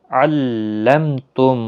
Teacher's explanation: علمتم میم ساکن کے بعد تا اظہار شفوی ہوگا